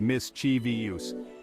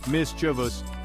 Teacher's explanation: we emphasize the first syllable Miss and then it's a smooth transition to chus